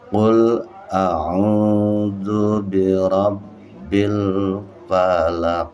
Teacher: Qalqalah kubra. Apa artinya kubra? Besar, memantulnya besar.